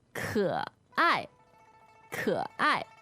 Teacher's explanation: so K-E, third tone, A-I, fourth tone.